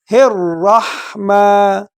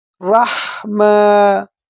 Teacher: الرحمن، اور را کو پر پڑھیں گے، موٹا پڑھیں گے کیونکہ یہ جو نا موٹے حروف میں سے ہے۔ الرحمن، ہا کو گلے کے شروع سے ادا کریں گے